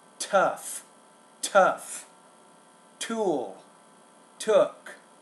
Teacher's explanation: with the T, you have to pronounce that with more air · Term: T sound